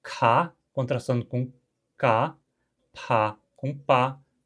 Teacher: O hunsriqueano contrasta sim aspiradas com não-aspiradas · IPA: [kʰa]